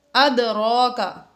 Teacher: دال ساکن ہے حروف قلقلہ میں سے، اس لیے یہاں پر ہم نے اس میں قلقلہ ظاہر کیا، یعنی اس کو ہلا کر پڑھا۔